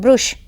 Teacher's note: ब्रश है तो कई लोग बोलते हैं ब्रुश या ब्रश बोलते हैं, तो इस प्रकार से इसमें ऊ ध्वनि का आगम हो जाता है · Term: स्वरागम